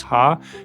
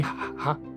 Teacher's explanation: Our own laughter is a bit more voice, ha. Theirs is a bit more breathy